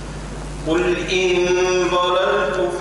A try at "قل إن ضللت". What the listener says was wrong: لا، كيف أقول ضللت؟ فخمت اللام الأولى والثانية، ضللت كان الضاد مفخمة. قل إن ضللت ضللت.